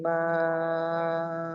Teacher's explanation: মাদ্দে মুত্তাসিল 2 থেকে 3 আলিফ পরিমাণ টান দিয়ে পড়তে হয়।